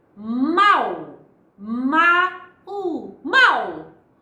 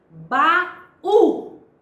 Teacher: só há um som percebido com nitidez, o som do A, enquanto o U fica quase imperceptível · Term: semivogal